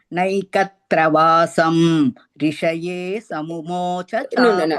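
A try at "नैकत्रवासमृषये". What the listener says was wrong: Vasham rishaye. Naikatravasam rishaye. Mru, that is mrishaye. Im and ru, don't say separately. Naikatravasam mru. Not a combining, that is a one word. Im is not separate, ru is not separate.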